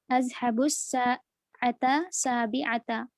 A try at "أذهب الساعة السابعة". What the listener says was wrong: ملا کے بولیے اس کو، دیکھیے تے کو سین سے ملائیے، الساعة السابعة